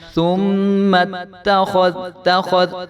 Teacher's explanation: تا کے اوپر زبر ہے تو اس کو ہم نے لمبا نہیں ہونے دینا. ثم اتخذ اور دال کو جو ہم نے ہلا کر نہیں پڑھنا.